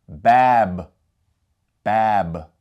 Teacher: the sukun means that there is no vowel sound coming after the ba. Therefore, if we were going to pronounce this, for the letter ba, we'd have a B sound.